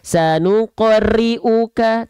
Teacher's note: dia punya sifat namanya takrir war wririn juil takrir itu apa dia bergetar tapi bukan dengan getaran sebagaimana kita melafalkan huruf r pada abjet alfabet